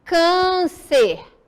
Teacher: o som é fechado ok não é aberto como agudo